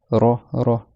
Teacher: le ra, c'est le bout de la langue qui vient taper, frôler la chair qui est derrière les dents du haut. Ra. C'est pas avec la gorge, c'est pas ra.